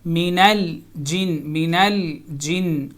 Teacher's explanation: یہ لام ساکن ہے، تو اس پہ حرکت نہیں ہے، اس کو موو نہیں کریں گے